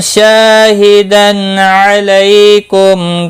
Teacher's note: الف مدہ ہے، شا 1 الف کے برابر کھینچ کر پڑھیں گے. تنوین کے بعد حلقی عین ہے، اظہار حلقی ہوگا، غنہ نہیں کریں گے. لئی یا لین ہے، تھوڑا نرمی کے ساتھ کھینچ کر ادا کریں گے.